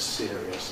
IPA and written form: ˈsɪəriəs (serious)